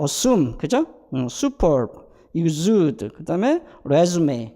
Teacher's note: 그래서 펠라탈 글라이드 소리를 내지 않습니다. 그런데 그 환경을 보니까 전부 다 스 다음에 왔을 때, 그죠?